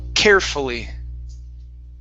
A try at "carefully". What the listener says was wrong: Yeah, a little bit lighter on the top of your mouth